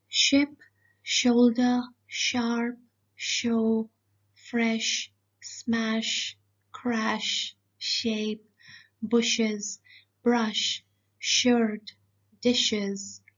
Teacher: so the sh sound has nothing to do with the voice box. Everything is happening in your alveolar ridge and the hard palate.